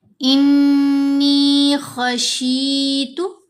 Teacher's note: نون کے اوپر غنہ بھی ہوگا اور نون کو 2 حرکات کی مقدار لمبا بھی کریں گے